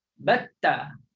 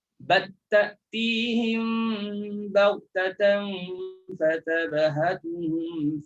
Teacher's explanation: Masukkan batta. Jangan sebut lagi lam. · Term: idgham